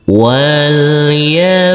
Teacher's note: huruf ba yang bersukun ini kita baca Qalqalah dan wajib hukumnya harus dipantulkan